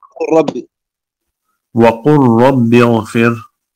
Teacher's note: إدغام اللام ساكنة وبعدها الراء حتى تجدها مشددة